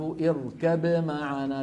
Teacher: فإذا التقت باء وميم فهما حرفان متجانسان، ففي فيهم الإدغام، اركم معنا، وهذا هو المشهور. لكن روي أيضا هذا الحرف اركب معنا بإظهار الباء عند الميم، يعني لعله بسبب عدم وجود غنة في الباء.